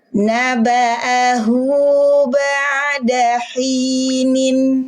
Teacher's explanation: Huruf nun kasrotain berarti dia punya suara en di ujungnya. Karena kita masih dibaca izhar, suara en dibunyikan dengan jelas.